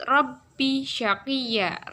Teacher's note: ya yang mulanya berharokat fathah tanwin karena dibaca wakof maka menjadi fathah panjang. Ini termasuk bacaan mat iwad.